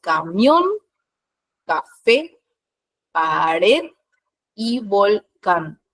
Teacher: son aquellas en las que la última sílaba es tónica, es decir, se carga la voz en la última sílaba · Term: palabras agudas